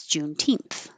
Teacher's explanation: that TH is a voiceless th